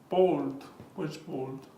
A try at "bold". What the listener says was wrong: No, not bolt. Bolt is when a horse runs away. Here is bold, which is negrita.